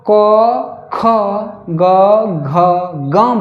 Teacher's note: जब आप क, ख, ग, घ, ङ बोलते हैं तो जो कंठ है ये वर्ण यहाँ कंठ से ही निकल रहे हैं